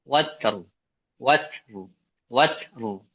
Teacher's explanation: Jadi yang ro tetap terlihat ya, sifat takrirnya.